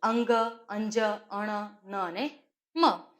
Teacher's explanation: જેનું ઉચ્ચારણ નાસિકા વિવર દ્વારા વધારે પડતી હવા બહાર આવે છે અને થાય છે માટે એને અનુનાસિક ધ્વનિ કહીએ છીએ.